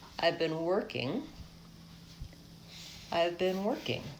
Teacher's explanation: I rise up to the stress syllable and I fall off.